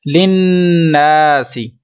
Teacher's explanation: نون مشدد میں غنہ ہے، ساتھ میں الف ہے، یہ الف مدہ ہے